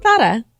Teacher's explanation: the Z in English is not the Z. It is actually a th sound in Spain.